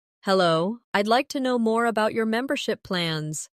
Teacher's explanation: Notice the stress on membership, so it's clear what you're asking about.